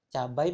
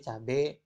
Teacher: Yang tadinya diftong menjadi monoftong. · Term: monoftongisasi